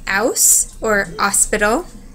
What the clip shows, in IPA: h or Ø